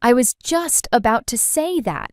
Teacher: The stress is on just and say.